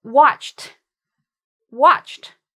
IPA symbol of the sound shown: t